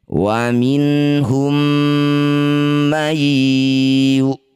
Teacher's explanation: Mim sukun bertemu mim disebut bacaan namanya idgham mimi. Cara bacanya bunyi mim pertama masukkan pada mim kedua. Bibir rapat dengung dua harakat.